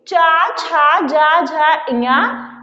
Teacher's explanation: चा, छा, जा, झा, इया, या और बड़ा सा का उच्चारण स्थान तालु होता है